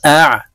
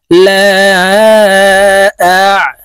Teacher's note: আইন হলকের মধ্যখান থেকে চাপ দিয়ে উচ্চারণ করতে হবে।